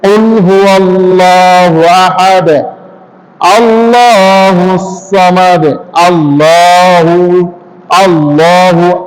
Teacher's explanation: এখানেও ভুল করি আমরা, আল্লাহ কুল হু ওয়াও পড়ি কিন্তু ওয়াল্লাহু বলি, ওয়াল্লাহু না। হামজা আলিফ লাম, এই যে আল্লাহ শব্দের লাম, এই লামটি পুর করে পড়তে হবে।